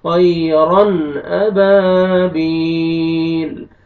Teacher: यहाँ देखिए तनवीन के बाद हुरूफ हल्क़ी में से हमजा आ रहा है, आपने यहाँ पे इज़हार भी करना है, जल्दी पढ़ेंगे।